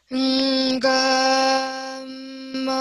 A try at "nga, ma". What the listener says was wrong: Okay, so I'm hearing a lot of air in your voice. Now, I don't know whether it's just the mic that is doing that.